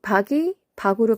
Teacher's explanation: 먼저 박이 박으로 변했죠. 자, 쌍기역이 종성 위치에 왔는데 쌍기역 발음이 나지 않고 기역으로 바뀌었죠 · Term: 음절 끝소리